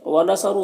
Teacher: صاد میں حروف مستعلیہ میں سے پر پڑھیں گے، را کو پر پیش ہے، را کو پر پڑھیں گے